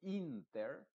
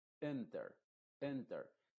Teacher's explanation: también va a ser esta I modificada se va a decir no se dice inter sino que se va a decir enter enter esa es muy muy apagada